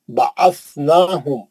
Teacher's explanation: میم کو کھینچنا نہیں، غنہ نہیں کرنا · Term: اظہار شفوی